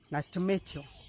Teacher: So to is not a very emphasized word here. That is why we pronounce it as ta.